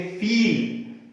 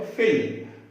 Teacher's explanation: FEEL आ रहा है तो बोलेंगे फील, स्वर लंबा जाएगा, फील। लेकिन अगर FILL है तो फिल।